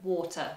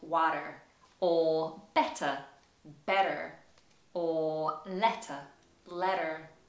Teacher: particularly when T appears in the middle of the word. In some cases, you'll hear it sounded like a D in America